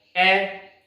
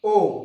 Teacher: वापस ओ को बोलते ही हमारा जो मुख है, होठ जो है वो वृत्ताकार अवस्था में आ जाते हैं, इसलिए इसमें वृत्तमुखी में ओ भी आ जाएगा और बड़ा ओ भी आ जाएगा।